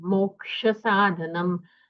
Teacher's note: जो क्ष है उसका वर्ण विग्रह होता है ककार और मूर्धन्य शकार तो उन दोनों का हमें श्रवण होना चाहिए जब हम क्ष